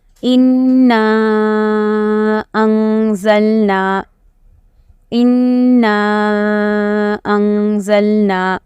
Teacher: کیونکہ نون مشدد، تشدید کے سبق میں ہم نے پڑھے تھے کہ نون اور میم پر جب تشدید آئے تو اس میں گنہ ہوگا، تو تھوڑا سا گنہ ایک الف کے بقدر کر کے پھر جو مد ہے اس کو زیادہ 3 الف کے بقدر کھینچنا ہے، تو گنہ کم مد زیادہ، انا अंज़लना।